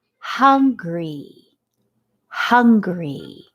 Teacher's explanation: So you really don't hear the N.